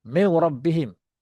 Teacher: Maknanya bila nun termasuk ke ra, nun tu pun hilang. Hilang zat, sifat semua tak ada. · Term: idgham kamil